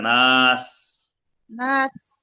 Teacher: বাতাস বের করে স্পষ্ট করতে হবে, নাহলে থা হয়ে যাবে থা